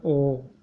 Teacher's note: बोलते समय अपना जो होंठ है वो गोल हो जाता है, तो गोल हो माने वृत्ताकार हो जाता है।